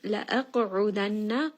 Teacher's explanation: qaf is going to be heavy. It is one of the letters of qutb jad.